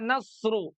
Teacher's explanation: Huruf Shad dibaca tebal karena isti'la. Selain itu, ia memiliki ciri khas idbaq seperti yang telah disebutkan sebelumnya.